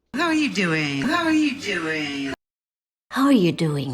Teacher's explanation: y tenemos la entonación cayendo al final, como esta es una pregunta WH, a WH question, siempre queremos caer la entonación al final.